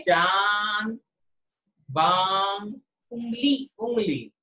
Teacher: जब इन शब्दों को हम बोल रहे हैं तो मुंह हमारा ज्यादा खुल रहा है, नाक भी खुल रही है, नाक से भी हवा निकल रही है, लेकिन नाक में कंपन कम होएगा। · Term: अनुनासिक